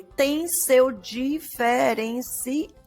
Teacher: diferencial é oxítona. E ao é a sílaba tônica da palavra diferencial. Então, como a sílaba tônica coincide com a última sílaba da palavra, então ela também foi contada.